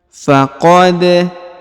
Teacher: Huruf dal diqalqalahkan atau dipantulkan karena dia berharokat sukun ya.